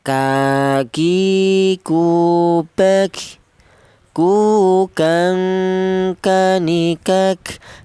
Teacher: Untuk huruf kaf. Huruf kaf ini keluarnya huruf berasal dari pangkal lidah. Pangkal lidah itu lidah bagian belakang.